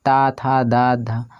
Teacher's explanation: ऊपर के दांतों में जब टकराता है तो दंत व्यंजन होता है